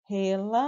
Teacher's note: O lã durou mais, então ela é a mais forte da palavra.